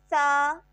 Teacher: جب زبان کی نوک ثنایا علیہ کے سرے سے لگے گی تو اس سے ہمارے پاس ادا ہوگا سا، اور یہ حروف لساویہ میں سے ہے۔